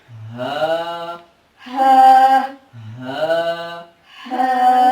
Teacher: یہ جو ہا ہے دو آنکھوں والی ہا ہوتی ہے، اس کی آواز ہمارے سینے سے ادا ہوتی ہے۔